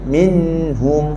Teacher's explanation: nun tak boleh bunyi putus, mesti dengan suara hidup, ada dengar pendek.